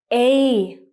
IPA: eɪ